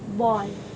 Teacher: the o in this back vowel there is an articulation where the tongue is positioned in the low mid area in the mouth and is Arc at the back portion the lips are rounded slightly dropping the jaw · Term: back vowels